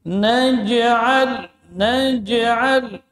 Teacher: bagian tengah lidah terangkat ke langit-langit atas sehingga makhrajnya tertutup rapat. Jadi tidak ada udara yang mengalir ketika menyebut huruf jim. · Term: syiddah